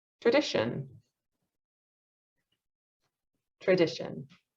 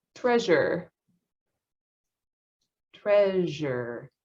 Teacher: Sh, they're both post-alveolar fricatives. It's just sh, it's voiceless. Zh is voiced. So you have the vocal folds coming together on zh.